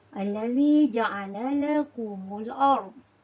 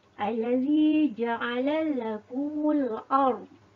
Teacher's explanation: murid-murid perlu bunyi lam pertama dimasukkan ke dalam lam yang kedua, iaitu ditasydidkan. Oleh itu sebut dengan betul-betul apabila huruf lam pertama dimasukkan lam kedua yang bertasydid. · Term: Idgham kabir